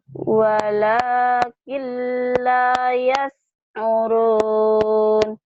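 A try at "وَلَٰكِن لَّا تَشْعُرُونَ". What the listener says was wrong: bukan yas tapi tash.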